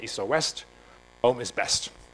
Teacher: the so-called criticus, meaning one stressed syllable followed by an unstressed one and a second stressed one